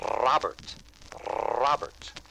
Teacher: Roll your tongue against the roof of your mouth. It's the Scottish rolled R sound.